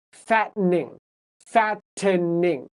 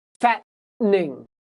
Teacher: so the T turns into a stop